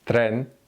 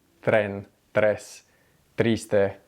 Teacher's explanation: Tren, tren. But if you put your tongue in the Spanish T position against your back of your teeth, tren, it's a lot easier to then roll your R